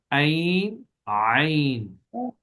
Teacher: عین میں تھوڑا سا گلے کو دبا کے پڑھے، گھونٹ کر